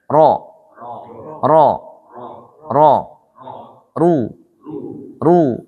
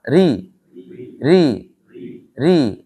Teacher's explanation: Dikatakan tebal saat dia berharokat fathah dan dhammah, dan dikatakan tipis atau tarkik saat dia berharokat kasrah.